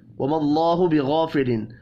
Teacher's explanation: وَمَا اللَّهُ بِغَافِلٍ، اللہ کا نام زبر کی وجہ سے پر پڑھا جائے گا. غین حروف مستعلیہ ہے، پر پڑھیں گے. الف مدہ کو ایک الف کے برابر کھینچ کر پڑھنا ہے.